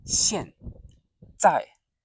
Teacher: So both are fourth tone, as you can hear, short and sharp.